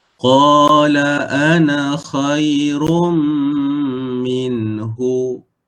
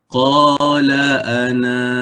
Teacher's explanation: na kena baca dengan dua harakat ketika waqaf